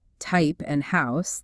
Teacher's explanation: the vowel sounds in words like type and house, they raise in your mouth, they shift to a slightly higher position when they come before a voiceless consonant, like the P in type and the S in house. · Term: Canadian raising